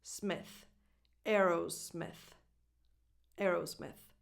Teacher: in the second syllable, smith, the vowel is a lax I, as in the word it, and then you finish with a voiceless th, as in the word think.